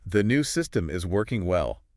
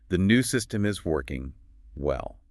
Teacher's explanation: Spoken with a neutral falling tone · By stressing working and adding that fall rise, you're implying that while it's technically operational, it's not performing greatly.